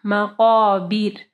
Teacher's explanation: اچھا یہاں پہ دیکھیں را کے اوپر جب ہم لوگ وقف کریں گے، را ساکن ہوگی تو را ہم موٹی پڑھیں گے یا نرم پڑھیں گے، تو اس کے لیے آپ کو پہلے والا جو ہے حرف دیکھنا ہے. جیسے با کے نیچے زیر ہے تو ہم لوگ را کو جو ہے نرم پڑھیں گے